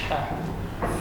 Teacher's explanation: huruf H, huruf yang keluar dari tengah tenggorokan.